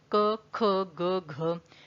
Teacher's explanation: क बोला तो आपने देखा जो जीभ का पीछे वाला हिस्सा है वो टच हुआ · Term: स्पर्श व्यंजन